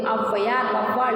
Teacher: சொல்லின் முதலில் வரும் பொழுது இரண்டு மாத்திரை அளவு ஒலிக்காது ஒன்றரை மாத்திரை அளவுதான் ஒலிக்கும் ஒன்றரை மாத்திரை அளவுதான் ஒலிக்கும் இந்த அவகாரம் வந்து சொல்லின் முதலில் மட்டுமே வரும் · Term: அவகார குறுக்கம்